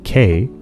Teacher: or a closest so the sound K is a velar sound it involves the back of your mouth that's its place of articulation and the stopping of air which makes it up closest that's its manner of articulation another